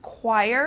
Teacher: this CH turns into like a K sound, choir, or a Q sound.